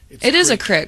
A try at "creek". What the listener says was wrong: It's a creek. There are two E's, not an I. Which creates a long.